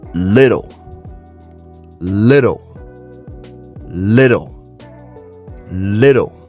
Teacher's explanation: Now remember, when it comes to the American accent, the two T's inside of little, it's not pronounced with a hard T sound. It's not little, it's little with a soft D sound.